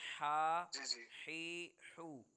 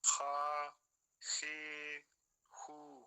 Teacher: یہ خا نہیں، ہا ہے، ہا جو حلق سے ادا ہوتی ہے